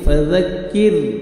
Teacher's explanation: تجوید کے رولز دیکھیں آپ اس آیت میں، فذکر، ذال کو نرمی سے ادا کرنا ہے، زا زور سے نہیں پڑھنا ہے، فذکر، کاف کو باریک پڑھیں گے، فذکر، اور را ساکن سے پہلے زیر ہے، را کو آپ نے باریک پڑھنا ہے، پر نہیں کرنا